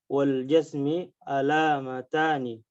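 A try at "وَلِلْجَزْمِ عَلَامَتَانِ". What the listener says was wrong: Walil jazmi. Ada lam di situ.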